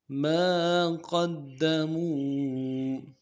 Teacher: دال کے اوپر قلقلہ کریں گے اور دال کے اوپر تشدید ہے، زور دیں گے